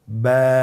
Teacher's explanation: এর মাখরাজ হলো আপনার 2 ঠোঁটের বিজা অংশ থেকে আপনি উচ্চারণ করবেন।